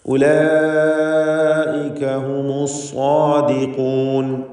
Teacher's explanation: ഉലൈക എന്നതിലെ ദീർഘം മദ് മുത്തസിൽ വാജിബ് എന്നതാണ്. 4-5 ഹറക്കത്തിൻ്റെ അളവിൽ ഈ പദത്തിലെ അലിഫിനെ ദീർഘിപ്പിക്കൽ നിർബന്ധമാണ്